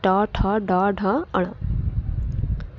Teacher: मूर्धन्य ध्वनियाँ कौन सी है, मूर्धन्य ध्वनियाँ कौन सी है, तो ट वर्ग है मूर्धन्य ध्वनि, अर्थात मूर्धा से उच्चारित होने वाली ध्वनियाँ हैं ट, ठ, ड, ढ, अण।